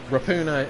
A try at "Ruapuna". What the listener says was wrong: You pronounce the A. You pronounce the A, that's the way it's done.